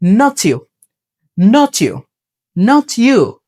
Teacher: letter যদি টি হয় তারপরে শব্দের প্রথম লেটার যদি ওয়াই হয়, টি এবং ওয়াই দুটোটা মিলে হবে চ, অর্থাৎ ঠা সাউন্ড এবং ইয়া সাউন্ড দুইটা মিলে হয় চ